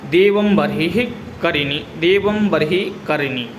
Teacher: देवं बर्हि में रेफ और हकार के बीच में संयोग है, इसलिए यहाँ पर करिणी नामक स्वर भक्ति है।